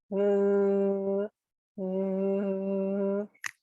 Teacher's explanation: There's the TH voiced sound. And voice just means when you say it, your throat is vibrating. So it's and then there's also one that's called the TH unvoiced, which your throat doesn't vibrate.